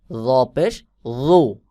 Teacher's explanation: এই দুই হরফে যখন পেশ আসবে তখন জ উচ্চারণ হবে হলো আওয়াজ মোটা এবং গোল মতো হয়ে উচ্চারণ হবে